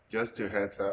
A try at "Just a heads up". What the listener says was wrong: Not just 2 heads up. Just a heads up. No, not just 2. Just a. Just a heads up.